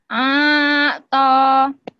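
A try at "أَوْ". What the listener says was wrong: Jangan putus. Jangan diputus-putus, Bu. Gimana bacanya? Bukan.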